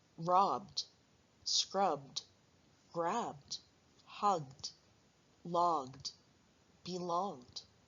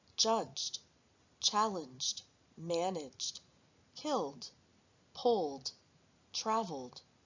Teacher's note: Verbs ending in voiced sounds will have an ending that sounds like d.